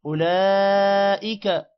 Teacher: اولئک، او کو لمبا نہیں کریں گے، لام پر کھڑی زبر بھی ہے اور مد بھی ہے، لام لمبا ہوگا